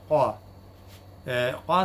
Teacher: it is post-velar and it is also voiceless. Voiceless as well as unaspirated.